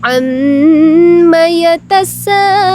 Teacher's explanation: mad tabi'i yang berada di akhir kalimat. Jadi harus dimatikan ya huruf terakhirnya. Dipanjangkan, bisa 1 alif, bisa 2 alif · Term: mad arid lis sukun